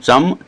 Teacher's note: ये तालु से बोला जाता है तालु से जीभ थोड़ी सी तालु से टकराती है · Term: च वर्ग